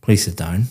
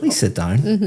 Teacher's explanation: very flat intonation going down · my intonation is going up sounds completely different but the words are exactly the same